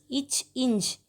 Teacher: நாவின் இடைப்பகுதி அன்னத்தின் இடையில் பகுதி பொருந்துவதால் பிறக்கின்றன